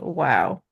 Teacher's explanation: Teeth are not touching your lips. This wow comes from the roundness of the lips only and without the teeth coming in touch with the lips. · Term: W sound